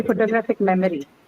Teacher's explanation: when you added IC the stress has now shifted to the third syllable